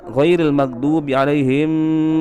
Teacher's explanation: Kemudian ayat terakhir ghairil maghdubi alaihim, huruf mim di situ sukun, akan tetapi ditahan oleh Habib Umar Al-Hafiz